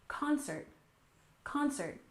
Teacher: concert we stress the first syllable